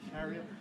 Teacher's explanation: karaoke you notice has two stresses